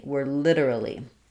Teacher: we have first syllable stress, so we're stressing on the li.